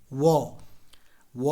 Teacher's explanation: उसके दो उच्चारण स्थान है आपको साथ बोल दंत और ओट जब व का उच्चारण किया जाएगा तो इस व का उच्चारण स्थान दंत भी होगा ओट भी होगा दांत भी होंगे होठ भी होंगे व व बोलेंगे तो होठ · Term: दंत ओट